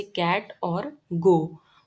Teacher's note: टंग blade और hard palate से श की साउंड बनती है, जैसे इन शूज। जब टंग बैक वेलम को टच करता है तो क और ग जैसी साउंड्स बनती हैं